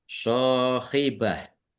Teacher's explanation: Shot fathah alif, mat tobi'i. Kemudian tak marbutoh, domah tanwin, karena wakob dibacanya hak sukun.